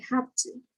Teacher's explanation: there's no voiced v consonant anymore